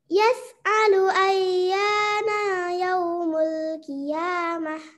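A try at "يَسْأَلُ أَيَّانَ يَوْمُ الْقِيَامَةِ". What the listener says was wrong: Pada ayat 6, nanya pendek nak ya. Pada ayat 6, nanya pendek karena setelah harokat fathah tidak ada alif. Setelah harokat fathah, kalau nggak ada alif berarti huruf hijaiyah itu pendek gitu.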